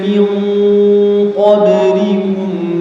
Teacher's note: Ikhfa haqiqi ya, ikhfa haqiqi. Nun sukun bertemu huruf qaf.